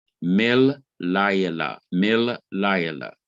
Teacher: the lamet or the L of la yela, the first L, is doubled. It receives a dagesh forte, a strong dagesh, and you have then M-I-L-L-A-Y-E-L-A-H, mil layala, mil layala.